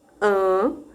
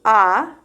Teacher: fazer o som e perceber como ele passe abaixando am e o ar aí consegue fluir pelo nariz diferente do a em que o véu fica mais próximo da faringe e fechando a passagem do ar pelo nariz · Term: abaixamento do véu palatino